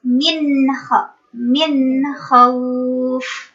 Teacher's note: Itu nun sukun bertemu dengan kha. Tidak ikhfa, tidak dengung, tapi jelas.